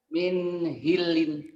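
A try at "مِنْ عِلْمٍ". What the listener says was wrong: G. Jawa jadi gitu tuh min hilin. G-nya ke H. Min gilin.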